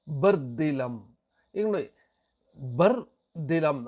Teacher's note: ಬರ್ದಿಲಂ ಅಂತ ಹೇಳ್ತಿವಿ ರ ಅನ್ನೋದು ತೇಲಿಸಿ ಬಿಡ್ತೀವಿ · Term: ಶಿಥಿಲ ದ್ವಿತ್ವ